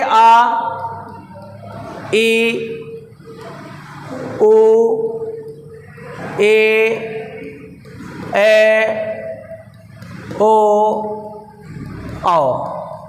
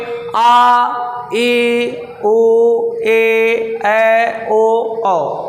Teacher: ऐसे स्वर जिनके उच्चारण में ह्रस्व स्वरों की अपेक्षा दुगुना समय लगता है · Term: दीर्घ स्वर